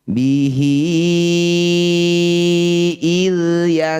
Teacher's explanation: Hi-nya panjangkan 5 harokat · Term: madsilah tawilah